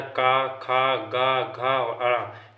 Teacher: का वर्ग का उच्चारण होता है कंठ से